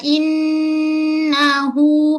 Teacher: Ghunah wajibal ghunah. Suara tolak ke hidung lama sikit. Walaupun sebut dua harakat. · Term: gunnah